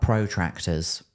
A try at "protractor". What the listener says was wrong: Protractors? You're saying it like there's a hyphen between pro and tractor. Like protractor.